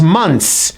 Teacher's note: This is one of only a few words in English where there's a TH, yet we do not pronounce the TH sound.